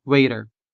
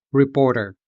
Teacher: So the T in waiter sounds like a rolling D or a soft rolling D.